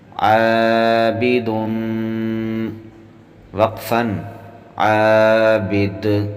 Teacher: ہم نے دال جب وقف کی صورت میں ساکن کیا ہے تو دال پر قلقلہ کیا ہے